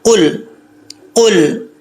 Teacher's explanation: لام کے اوپر جزم ہے، اس کو قلقلہ نہیں کریں گے. قل، قل ایسے نہیں کرنا.